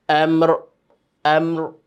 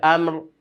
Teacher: রয় মাখরাজটা উপরে, জিবার আগাটা উল্টে গিয়ে তালুর সঙ্গে লাগবে